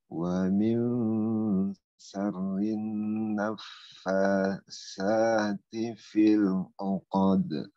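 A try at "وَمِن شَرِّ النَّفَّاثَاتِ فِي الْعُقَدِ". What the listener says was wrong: Huruf sa di ujung lidah Pak. ujung lidahnya ada di gigi atas. Sa. Ulangi.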